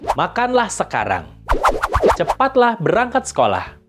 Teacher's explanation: dalam pengucapannya intonasi pada bagian akhir kalimat naik atau meninggi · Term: nada meninggi